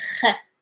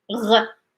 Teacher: the kh sound is not like vibrated as much as the gh